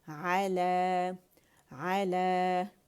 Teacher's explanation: 2 counts کے لیے آواز اوپر گئی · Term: الف صغیرہ